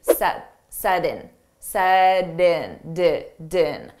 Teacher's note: we have a T between 2 vowels. So we can pronounce that T as a soft D, set in, din.